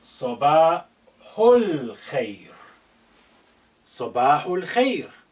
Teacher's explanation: this alif is not at the beginning, has been suppressed in terms of pronunciation. It's silent, it's not said. Sabahu, this hu is the nearest to the sukun on the lam.